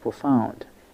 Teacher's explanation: the stress is on the second syllable, found